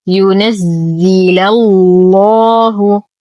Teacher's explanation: نغلظ اللام في اسم الجلالة لأنها سبقت بفتح